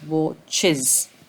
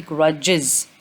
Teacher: So you have to add this, the sound, the vowel e, and then the sound z.